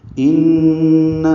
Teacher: غنہ ضرور کریں گے، آواز ناک کے بانس سے ملے جائیں گے، دو حرکات تک ٹھہرائیں گے،